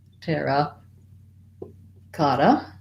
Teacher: as a phrase overall our main stress is going to be on the cot